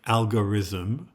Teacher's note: in Japanese pronunciation of English words there is no real distinction between the s sound and the th sound